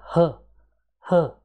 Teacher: the air passes without any frictions and it produces the sound like H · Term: glottal